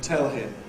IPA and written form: ˈtel hɪm (tell him)